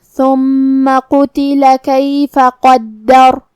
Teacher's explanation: ثا کو ہم زبان کے سر اور اوپر والے دانتوں کے اندرونی کناروں سے ادا کریں گے